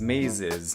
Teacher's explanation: then the plural is pronounced /ɪz/, with a vowel in there